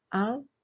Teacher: Be careful not to pronounce the ending loudly, it's just 'ang' not 'angu'.